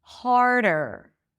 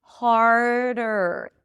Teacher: So, you bring the tongue up for the r hard. And then you bring it forward for the d harder. It's a light light d.